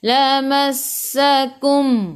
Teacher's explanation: Masuk ke dalam sin, tekan ke dalam sin, sin ada sabdu dan bunyikan sifat huruf sin safir.